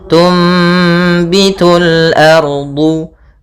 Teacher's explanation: Apabila ada nun sukun bertemu dengan huruf ba, ya, maka kita namakan dengan iklab, yaitu cara membacanya adalah suara nunnya diganti dengan suara mim